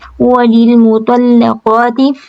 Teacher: لام باریک ہے، قاف اور طا جو ہے دونوں پورے ہیں